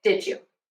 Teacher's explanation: And the D and the Y becomes a J sound.